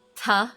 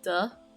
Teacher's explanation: But the difference is when you pronounce them, the ta sound that you make, there's no vibration in the throat. Whereas when you say duh, there's a vibration of your throat. So as you can see, voiceless versus voiced.